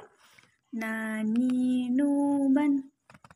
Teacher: Cara melafalkan huruf na adalah dengan menyentuhkan lidah terdekat dengan langit-langit bagian depan sama seperti lam.